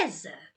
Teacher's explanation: é me, que é a sílaba tônica.